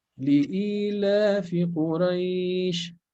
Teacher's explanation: It's not only kasra, but it's a long e here, right?